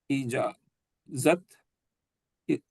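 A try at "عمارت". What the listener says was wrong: ज कहाँ से है? ज तब होता है ऊपर नुक्ता होता है, वो जे नहीं है, वो रे है। नहीं, आप के बाद मीम भी है, एन है, मीम है, अलिफ है। इमारत।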